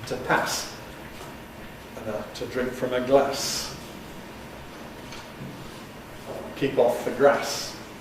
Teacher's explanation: in the north of England, they retain a short vowel, the same vowel as in trap, or the animal, the cat